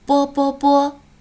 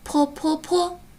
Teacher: 当我们发播的音的时候，嘴前面的这张薄纸是不动的。在发坡的时候，最前面的这张薄纸是颤动的 ，因为什么呢？在发坡的时候，它有气流的变化了，所以呀，它是颤动的。那我们有什么好方法来记一记呢？右下半圆波波波，右上半圆坡坡坡。我们可以用这样的顺口溜的方法把它记下来。右下半圆波波波，右上半圆坡坡坡。好啦，那下边我们接着来学习。刚才我们说到玩捉迷藏的这个